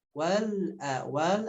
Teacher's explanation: Wal alif lam qamariyah tanpa ada pantulan lamnya. Au, nah di sini ada harf lin lagi, dilembutkan bunyi wawunya.